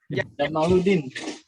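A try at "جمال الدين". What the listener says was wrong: Jamaluddin itu mimnya panjangin. Jamaluddin ya. Jangan dipendekin.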